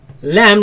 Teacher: my tongue is right after the teeth and you see the sound escapes on the sides